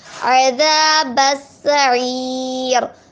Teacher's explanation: الف مدہ کو ایک مدار کھینچ کے پڑھتے ہیں. با جو ہے وہ سین سے ملے گا، اور سین کو بھی جو ہے ہم بغیر کھینچے پڑھیں گے.